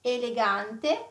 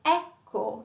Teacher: elegante, closed E, and ecco, like an open, open sound E